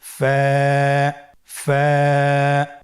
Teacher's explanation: স্ক্রিনে দেখতে পাচ্ছেন ফায়ের মাখরাজ। ফায়ের মাখরাজ হলো নিচের ঠোঁটের প্যাড সামনের উপরের দুই দাঁতের আগার সঙ্গে লাগিয়ে উচ্চারিত হয়।